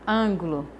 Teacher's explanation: O an é a sílaba tônica. Então, a antepenúltima sílaba tem que ser tônica.